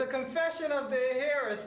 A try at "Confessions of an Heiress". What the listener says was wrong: The H is silent, all right? Confessions of an Heiress.